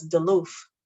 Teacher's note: So you'll hear words that end with TH being replaced with F.